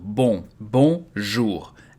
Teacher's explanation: So you have to be careful with bon. It's very nasal.